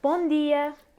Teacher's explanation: Words in Portuguese that end in an M are telling us that the vowel before the M needs to be nasalized.